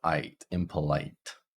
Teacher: we start at the A and then it transitions to I